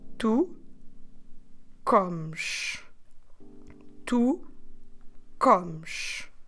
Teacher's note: that E S at the end we're completely dropping the vowel